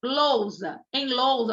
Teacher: S entre vogais tem som de z